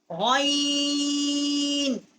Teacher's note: یہ ادنائے حلق جو منہ کی طرف والا حصہ ہے حلق کا وہاں سے غین کا مخرج ہے